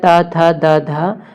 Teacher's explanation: और ये है ता, था, दा, धा, ता वर्ग। ता वर्ग का उच्चारण स्थान दंत होता है।